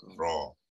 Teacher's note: ulama-ulama tajwid bersetuju membaca dia secara mad asli lah, 2 harakat